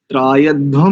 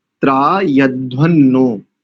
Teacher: और त्रायध्वम नहीं करेंगे, मैंने बताया तो था, त्रायध्वन्नो, वहां पर म नहीं करेंगे, अनुस्वार को नकार के कारण से ना ही उच्चारण करेंगे